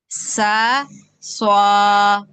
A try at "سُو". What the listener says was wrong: سوا پیش کی آواز آ رہی ہے، سوا نہیں کرنا، سو سو، زبان کو اوپر تالو کی طرف اٹھانا ہے، سا سو،